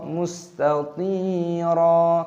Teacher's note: “Syarruhu.” “Mustathiro.” “ Mustathiro.” 'Dosa' tersebut memiliki sukun, yang dibaca sebagai "mustathi". Huruf 'tha' dibaca panjang dengan sukun 'ya', dipanjangkan selama dua ketukan, mad thabi'i, dan huruf 'ra' dibaca panjang dengan tanda alif, ini mad iwadh, jadi jangan dibaca " mustathiron" tetapi "mustathiro", aturannya dibaca sebagai mad iwadh seperti itu.